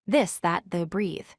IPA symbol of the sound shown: ð